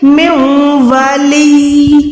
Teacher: مِن وَلِيٍّ، یا کو آپ نے ساکن دے کے جب بھی زو زیر پہ ہم وقف کر دیں تو ہم اس کو ساکن کر دیتے ہیں، تو یہاں پر یا پہ شد بھی ہوگی، ساکن بھی، یعنی یا یہاں پر 2 دفعہ ادا ہوگا۔